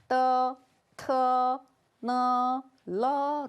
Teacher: 혀끝을 윗 잇몸 뒤에다가 붙이고 떼면서 발음을 합니다. 그리고 모음은 어와 결합을 합니다.